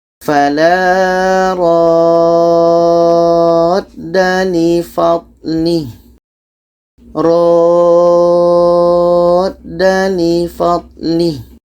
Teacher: kita panjangkan ro ini 6 harakat baru masuk ke da. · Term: mad lazim kilmi mutsaqqal